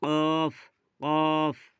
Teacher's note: জিভের গোড়া এবং তার বরাবর ওপরের তালুর সঙ্গে লাগিয়ে উচ্চারিত হয় ২ নোক্তাওয়ালা কফ